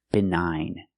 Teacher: The GN is at the end, so the G is silent.